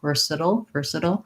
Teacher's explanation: we have first syllable stress we have the er sound · uh versa versatile and then this one is a flap and it kind of goes right from that flap into the dark l so there's maybe a little schwa there or maybe just an l